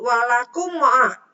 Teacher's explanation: Mim mati menghadapi ain dibaca jelas itu idhar safawi.